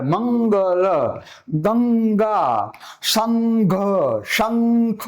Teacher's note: જો બધે અંગ બોલાશે, કારણ કે અનુનાસિક પછી જે તે વર્ણનો તે અનુનાસિક વ્યંજન લે છે.